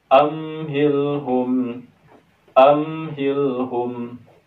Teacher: Kita baca mimnya tidak boleh dengung. Katupkan bibir kita. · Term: idhar syafawi